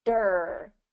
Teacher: Same thing with the D. D can be especially tricky, especially when you're rolling that R, because D and that kind of rolled R are in the same position. So you have to go dry.